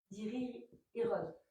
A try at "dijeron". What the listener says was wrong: Non, il n'y a pas de i. Très bien. Dijeron.